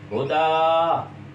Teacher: ہدان کی تنوین ختم ہو جائے گی، الف مدہ میں تبدیل ہو جائے گی